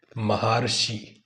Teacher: ऐसे ही महा प्लस ऋषि इसका आ और यहां पर ऋ है तो आ और ऋ मिलकर अर की ध्वनि आती है